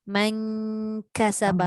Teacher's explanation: Okey, specialnya untuk ikhfa hakiki ni kalau nun bertemu kaf atau nun bertemu qaf, kita punya sebutan dengung tu pergi ke belakang